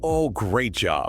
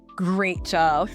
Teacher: When we use bantering sarcasm, our pitch goes very high,